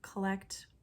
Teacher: the unstressed schwa vowel that we find in the COL, collect. We don't say collect, collection.